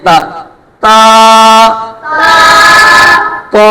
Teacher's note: sorry مخرج تو ایک ہی ہے، دونوں کی آواز علیحدہ کرنے کے لیے تو کو پر پڑھیں گے اور تا کو باریک پڑھیں گے